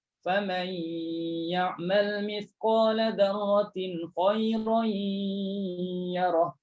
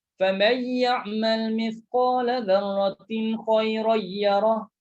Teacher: Ada dengung dan ada tekan pada huruf ya.